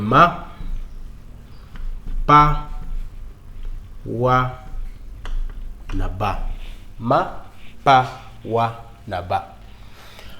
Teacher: Mapawaba ni konsonanti ambazo zinatamkwa kwa midomo.